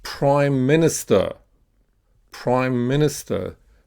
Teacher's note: So the stress is on the prime and the first syllable of minister. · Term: stress pattern